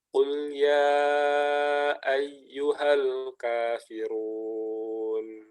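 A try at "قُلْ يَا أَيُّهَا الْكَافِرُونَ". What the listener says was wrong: Ya-nya tipis ya, jangan yo, ya. Qul ya ayyuhal kafirun. Ya, jangan yo, ya. roknya baru tebal, jangan run, ya, Jadi tebalnya tebal maksimal gitu. Ya, kafirun.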